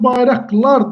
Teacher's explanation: Samit yadda saxlayaq ki, sözün sonunda qdan sonra samit gələrsə, q hərfi x kimi tələffüz ediləcək